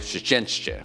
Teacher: You have a sh and a ch right next to each other and there's no real vowel, and being able to like say that smoothly is very weird.